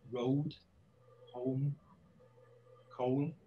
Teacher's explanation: And if we think, maybe for comparison's sake, of this vowel sound in received pronunciation, in words like road, home, coal, in received pronunciation, this is an O sound, which is a diphthong. It's a diphthong is two vowel sounds together.